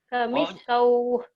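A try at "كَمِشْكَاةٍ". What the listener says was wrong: wawnya nggak dibaca. Itu kan patah. Kamiskah gitu. Kalau dihentikan. Tapi kalau dibaca apa adanya kamiskatin, ya, kamiskatin.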